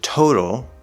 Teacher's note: in the word total, that first syllable is stressed, so we have a nice strong T, to. But then in the middle, we have the letter T at the start of an unstressed syllable, so it's going to be a flapped D sound, total.